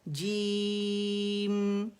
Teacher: جیم کے لیے کیا ہوگا کہ صرف زبان کا درمیانی حصہ اوپر جا کو غار کو لگے گا. ٹھیک ہے، زبان کا درمیانی وسط اللسان، غار جو ہے اس کے اندر جا کے ہمارے زبان کا یہ حصہ لگتا ہے جیم کے لیے. اور ہماری جو زبان کی ٹپ ہے وہ دانتوں کے اندر رہے گی، باہر نہیں نکلے گی، اور نہ دانتوں سے لگے گی.